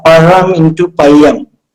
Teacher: wherever we put ra, like whatever is the position, it changes to ya.